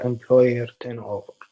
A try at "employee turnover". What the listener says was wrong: Employee turnover. Careful employee, employer.